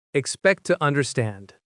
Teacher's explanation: Notice the stress pattern. The strong words are expect and understand while tu is weak and reduced. That's why it sounds so fast.